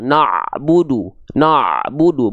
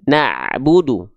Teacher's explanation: menebalkan huruf Ain yang seharusnya dibaca tipis